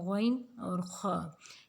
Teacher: ہمارے پاس ہے جی حلق کا منہ کی طرف والا حصہ، اس سے غین اور خا یہ دونوں حروف نکلتے ہیں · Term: ادنی حلق